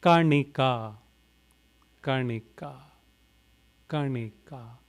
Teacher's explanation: N with the dot below, so rolling your tongue up, retroflex, na.